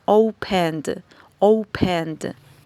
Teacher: no pronunciamos la e sino que esta última sílaba la pronunciamos uniendo la n con la d es decir esta e no se pronuncia sino que directamente pronun